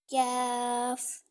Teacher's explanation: जो कैफ है वह जुबान की जड़ और तालू के सख्त हिस्सा से अदा होता है